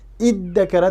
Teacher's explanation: zalni dalga almashtirib, undan keyin ikki dal bir yerda kelib qoldi deb ikkisini idg'om qilib iddakara deb ishlatiladi. Lekin bu iddakaraning aslisi izdakara.